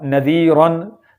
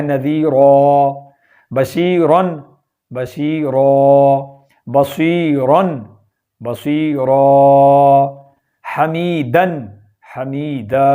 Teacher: اس دو زبر کو ہم نے ایک الف بنا دینا ہے اور ایک الف لمبا کر دینا ہے، یعنی ایک زبر جو ہوگی وہ ختم ہو جائے گی اور ایک زبر برقرار رہے گی، اور اس کو ہم ایک الف کے برابر لمبا کریں گے۔